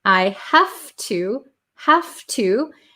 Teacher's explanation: The V sound changes to an F.